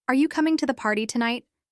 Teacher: Notice how the voice rises at the end because it's a yes no question.